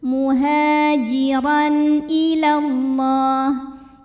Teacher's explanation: Lalu ada hukum izhar halqi sebab ada tanwin fathah yang menghadapi huruf halqi yaitu hamzah ya, huruf tenggorokan, maka tanwin dibunyikan dengan jelas. Jadi kalau tanwin asalnya bunyi n maka tetap sama ya dan tidak ditahan.